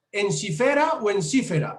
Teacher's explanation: en la que es una vocal abierta y eso hace que esa sílaba la penúltima sea una sílaba larga por eso lleva el acento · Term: palabra grave